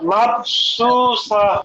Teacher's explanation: সিন এই সিটি আওয়াজ হবে না নরম হবে